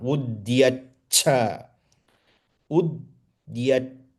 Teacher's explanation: The cha is Mahaprana